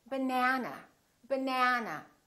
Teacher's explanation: this second syllable is stressed that means this vowel is going to be much longer